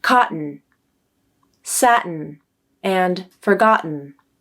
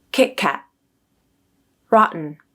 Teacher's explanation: We use a glottal stop for the T when the letter T comes in the middle of the word and is before a final syllable ending with N, like in cotton, satin, and forgotten.